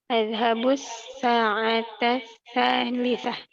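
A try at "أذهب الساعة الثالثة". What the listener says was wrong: Adhabu sa'ata tsalitsah. Mumtazah.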